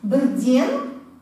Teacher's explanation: Мы используем шелосеттек, да? Бер, окончание дан, ден должно подходить, потому что р у нас звучная, да? Это сонорная буква.